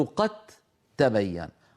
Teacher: لا يمكن إدغام دال في تاء إلا إن حولنا الدال في قد إلى تاء، فعندئذ تصير قد تبين.